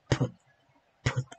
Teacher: a voiceless bilabial stop